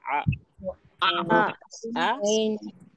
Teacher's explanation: हलक के बीच वाले हिस्से से निकलेगा · حلق کے بیچ والے حصے سے نکلے گا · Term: ऐन, عین کا عین ساؤنڈ